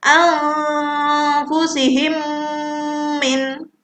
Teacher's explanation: mim mati ketemu mim yang harus ditahan lama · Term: idgham mimi